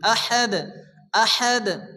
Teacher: আয়াতের শেষে দাল সাকিন, দাল কলকলা অক্ষর হালকা ধাক্কা দিয়ে পড়তে হবে